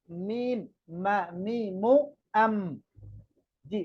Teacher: মিম দুই ঠোঁটের শুকনা অংশ থেকে